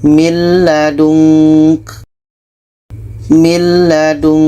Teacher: bunyi Nun masuk ke la dan tidak ada dengung · Imran ayat 8 ini jadi di sini ada Nun bertemu lam bunyi Nun kita masukkan ke lam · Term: idgham Bila Ghunnah, idgham bila gunnah